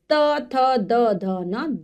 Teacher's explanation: त वर्ग ये दंत से इनका उच्चारण होता है यानी कि हमारी जो जीभ है वो दांतों को छूती है इसलिए इनको दंत कहा जाता है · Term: दंत व्यंजन, दंत्य